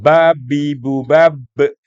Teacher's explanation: Keluar di antara dua bibir dengan mengatupkan atau merapatkan keduanya. Tuh, mengatupkan maksudnya menutup, merapatkan.